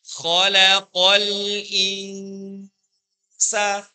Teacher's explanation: Sin itu makhrajnya, tempat keluar hurufnya, ujung lidah menuju pada gigi seri. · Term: ikfa hakiki